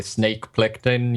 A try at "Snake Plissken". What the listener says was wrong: You mean Plissken? You said Plitkin.